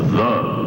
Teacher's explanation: that TH sound rumbles through my mouth